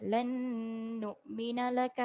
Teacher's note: nun mati tanpa tanda jumpa dengan nun baris sabdu lan dengung 2 harakat